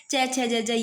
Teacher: स्पर्श संघर्षी व्यंजन च वर्ग के बोलने में सांस स्पर्श के साथ कुछ घर्षण के साथ निकलती है। मतलब ऐसे घर्षण सा होता है।